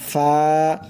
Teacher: নিচের ঠোঁটের পেট সামনের উপরের দুই দাঁতের আগার সঙ্গে লাগাইয়া একটি অক্ষর উচ্চারণ হয়